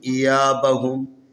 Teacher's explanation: یہاں پر یا کے اوپر زبر ہے جو الف کی مناسب حرکت ہے، لذا اس کو تھوڑا سا کھینچ کے پڑھیں